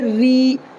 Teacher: را یا زیر ری، دیکھو یہ را جو ہے، یہ اس را کو باریک پڑھیں گے، اس لیے کہ را کے نیچے زیر ہے، تو را کے نیچے زبر یا یہ را کے نیچے زیر ہو تو باریک ہوگی، اور را کے اوپر زبر یا پیش رہے گا تو را پر ہوگا۔